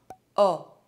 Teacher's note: The lips are slightly rounded and the mouth is almost open. The tongue is backwards. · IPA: [ɔ]